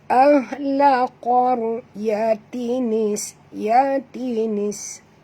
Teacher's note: huruf qaf tebal dan ra ini juga kena baca tebal ya, ra tafkhim kerana ra itu mati, huruf sebelumnya berbaris di atas ya.